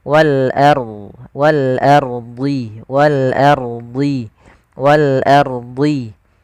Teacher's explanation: Kemudian wal ardi, ini ada alif lam qamariyah yaitu alif lam yang tertulis tapi dia dibaca huruf lamnya dengan jelas. Wal ardi, ro-nya di sini ada hukum tajwid berupa ro tafkhim, jangan wal ardi, tapi dia ro tebal